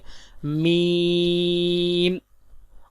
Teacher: Next با، دونوں ہونٹوں کے تر حصے سے ادا ہوتا ہے، جیسے با۔ میم، دونوں ہونٹوں کے خشک حصے سے ادا ہوتا ہے